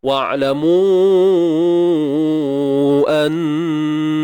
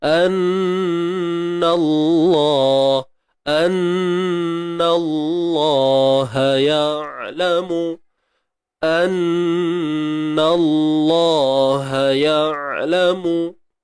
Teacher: Nun bersabdu wajibul gunnah. Wajib dengung apabila bertemu nun bersabdu. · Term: Dengung sempurna